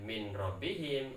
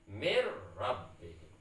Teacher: Harus tanpa dengung, diidghamkan tanpa dengung.